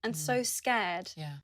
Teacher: uses the /ɛː/ vowel in the word 'scared'